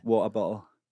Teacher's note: the glottal stop, which is the drop in the T